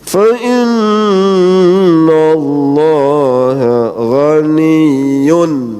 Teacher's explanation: Ini dibaca jelas atau izhar. Maka nunnya suara nun mati atau tanwin itu begitu jelas.